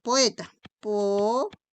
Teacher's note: Por ejemplo, si yo te digo poeta, poeta. La E y esta O no pueden ir juntas porque ambas son abiertas. Por eso aquí hay un hiato simple